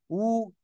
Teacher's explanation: ওয়াও পেশ উ, দুই ঠোঁট গোল